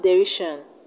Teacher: In the word derision, we have the stress on RI.